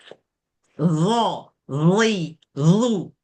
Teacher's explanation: D ni kena buat dua kerja. Satu lidah kena keluar. Yang kedua kena bunyikan sifat dia yang tebal tu.